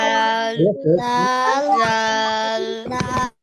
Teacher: জিব্বা রাখা, উপরের দুই দাঁতের গোড়ায় লাগাবো, এই যে দুই দাঁত, এই দুই দাঁতের গোড়ায়।